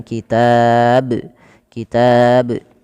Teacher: sebelum kita memantulkan ba itu kita panjangkan dulu taknya · Maka panjangkan dulu taknya, baru matikan ba dengan bacaan qalqalah, yaitu memantulkan huruf ba-nya. Maka tidak dibaca kitab saja, tapi dia harus ada pantulan kitab. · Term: mad arid lisukun